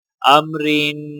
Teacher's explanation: را کے نیچے زیر ہونے کی وجہ سے را باریک پڑھی جائے گی